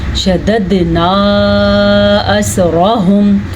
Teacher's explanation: را کو پر پڑھنا ہے اور ہا کی آواز کو چھاتی سے نکالنا ہے